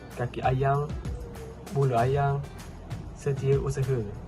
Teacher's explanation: penyisipan hentian glotis dalam sempadan kata majmuk